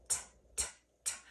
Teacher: tongue tip is tapping on the ridge